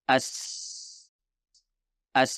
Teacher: diperhatikan di sini adalah bagian tengah dan bagian belakang lidah perhatikan Bagaimana bagian tengah lidah terangkat dan bagaimana bagian belakang lidah diturunkan inilah yang membuat huruf Sin sebagai huruf tipis